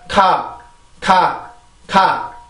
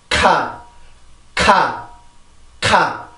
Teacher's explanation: K 발음으로 시작되는 단어들을 보면 이렇게 연구개가 조금 이렇게 긁힌다라고 해야 될까요? 공기 때문에 이렇게 긁히는 느낌이 나는데 그런 것들이 다 이 영어의 자음들이 만드는 특징들인 거예요.